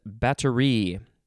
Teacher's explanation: the emphasis is on the last syllable